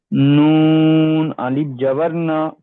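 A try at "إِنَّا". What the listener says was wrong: না, টান হবে জি, আলিফ মাদ্দা। জি, আলিফ মাদ্দাকে কি করে পড়তে হয়? জি, আলিফের ডান দিকে যাবার হচ্ছে ইন্না।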